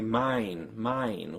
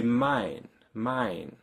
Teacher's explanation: the tongue doesn't end up as high up in the mouth at the end when compared to English we say mine mine where the tongue is almost near e